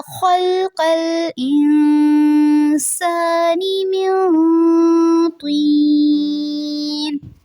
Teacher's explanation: خلق الخا کو پر رکھنا ہے، قاف بھی پر رہے گا